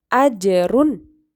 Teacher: Ajrun dibaca memantul, yaitu qalqalah